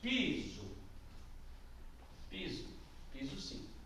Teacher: Piso tem a sua primeira sílaba mais forte. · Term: palavra paroxítona